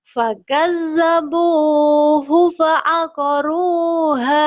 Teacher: Bunya panjang, hunya pendek ya.